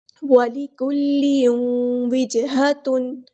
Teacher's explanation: تنوین کی آواز میں واو کی آواز کو مکس کریں گے، مرج کریں گے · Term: ادغام